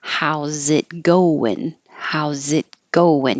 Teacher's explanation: You don't hear the T, and the win can be I, like it, or it can be like up.